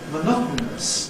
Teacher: we’ve got a syllabic [n̩] in place of the [ən] that you might expect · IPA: [məˈnɒtn̩əs]